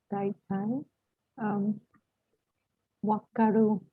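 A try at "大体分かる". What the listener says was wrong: Good. Exactly.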